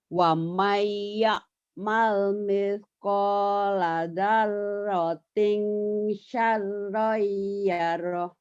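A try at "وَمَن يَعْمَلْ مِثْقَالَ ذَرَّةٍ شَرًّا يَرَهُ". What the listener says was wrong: udah bagus tapi shinnya kurang keluar. Wamai ya'mal mithqala dzarratin shin syarran yarah. Coba shinnya. Wamai ya'mal ومن يعمل مثقال ذرة shin syarra yarah.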